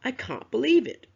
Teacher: I can't believe it has three stressed words: can't, believe, and it. So when students read, they have to speak louder on those three words in that sentence.